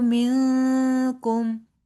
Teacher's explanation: نون ساکن کے بعد کاف آ رہا ہے تو یہاں پر اخفا ہوگا